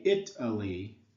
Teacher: when you say Italy it and Lee are the stressed syllables and the uh is not stressed